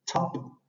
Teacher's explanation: La letra P va sin aspiración.